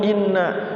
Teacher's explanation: in gunnah, digunnahkan dulu, jangan buru-buru. Inna, in 2 ketukan atau 3 ketukan.